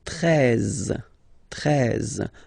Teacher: Then now if you combine this E and E, you get the sound E, really open